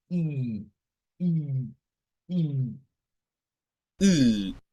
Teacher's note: usted haga la I así como siempre la ha hecho, pero ahora hágala como un poco más abierta. Vea, haga I, I, I.